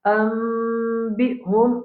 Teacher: Ambihum, ici c'est iqlab. Nous avons nun sakin après nous avons ba.